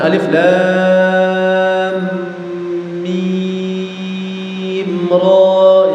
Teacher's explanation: lam sama mimnya dibaca 6 harokat, ra-nya dibaca 2 harokat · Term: fawatihus suwar